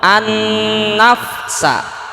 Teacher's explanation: ketika alif lam bertemu nun itu ada tambahan gunnah.